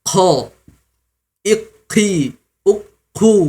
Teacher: sering tertukar dengan huruf kaf karena keluar percikan nafas ya.